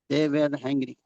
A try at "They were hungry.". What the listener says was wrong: वर वेयर नहीं, वर, दे वर हंग्री।